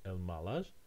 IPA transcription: elmalar